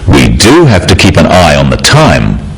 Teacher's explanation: Notice the emphasis on the word do